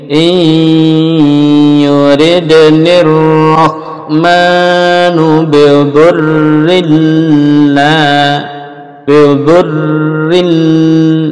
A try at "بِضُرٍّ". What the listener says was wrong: nah, di double, ditahan tasdid